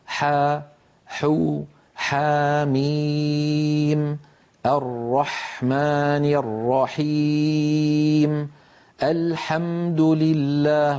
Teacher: انظروا إلى حرف الحاء كيف أن لسان المزمار يرجع ولكن قليلا، لا يرجع بالمقدار الذي كان يرجعه عند حرف العين.